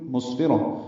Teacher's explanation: سین ساکن ہے اور اس پہ ہمس ہے ، فا کو اور را کو جلدی پڑھیں گے، را پر